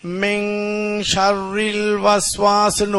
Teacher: சுக்குன் பெற்ற நூனுக்கு பிறகு ஷீன் வந்திருக்குது நூன் சத்தம் கொடுக்காம இங் சத்தம் கொடுத்து ஓதணும் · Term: இஹ்ஃபா உடைய சட்டம்